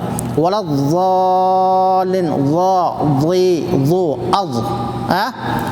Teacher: ज़बान का दोनों किनारा ऊपर के जड़ वाले दांतों का जड़ से मिलकर ज़ाद अदा होता है।